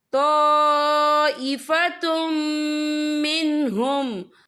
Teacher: यहाँ देखिए तो, यहाँ खालिफ से पहले जबर है और यहाँ पे मद भी है। ये मद जो है मद मुत्तसिल है, इसकी मिकदार 4 हरकत के बराबर है, तो हम इसे 4 हरकत के बराबर खींच के पढ़ेंगे। और आगे देखिए ताइफ़तुम, ता पे तनवीन, तनवीन के बाद जो है मीम आ रहा है, और मीम जो है रुफ़इयर मलून में से है, तो यहाँ पर इदगाम होगा, तो हम इसे गुन्ने के साथ पढ़ेंगे।